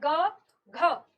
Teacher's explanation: ग की तुलना में घ बोलने में फिर से ज्यादा हवा लगती है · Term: महाप्राण